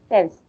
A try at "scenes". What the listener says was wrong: You said sense, but it's scenes. Scenes. Sense, scenes. But you just say it longer. Like, scenes. It's short. Like, the E is short, but for this, longer E. Scenes.